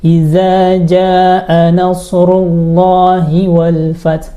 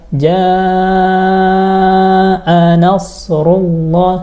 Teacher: Yang benar adalah tajwidnya. Baca minimal sampai empat harakat.